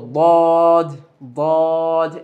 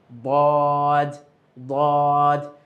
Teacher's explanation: দেখতে পাচ্ছি আমরা ৭ নম্বর মাখরাজ জিহ্বার গোড়ার কিনারা উপরের মাড়ির দাঁতের গোড়ার সঙ্গে লাগিয়ে উচ্চারিত হয়